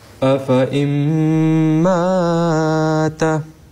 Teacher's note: the first excessive alif will be dropped, but the second word mata, this alif will be pronounced